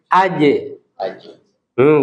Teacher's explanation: Huruf jim nggak boleh keluar desis. Bersih.